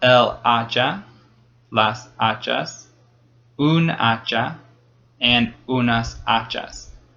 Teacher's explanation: there's an H there, but that H is silent